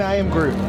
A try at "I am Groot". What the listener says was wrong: You're not using the proper inflection. You're saying it wrong, unfortunately. That's why he thinks you're saying you're him.